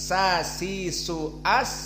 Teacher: Adapun sin sa si su as, maka dia atraf al-lisan. Maka dua makhraj yang berbeda.